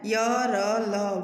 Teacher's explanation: जिन व्यंजनों के उच्चारण में जीभ मुख के किसी भी भाग को पूरी तरह स्पर्श नहीं करती है वे अंतस्थ व्यंजन कहलाते हैं